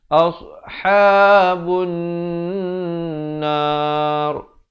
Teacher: Kalau waqaf, ra itu jadi tebal.